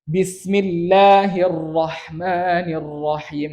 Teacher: Tapi hirro, getarnya, R-nya itu tersembunyi